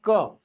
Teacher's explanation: क के साथ अ छिपा हुआ है ठीक है बिना अ के मैं क का उच्चारण नहीं कर सकता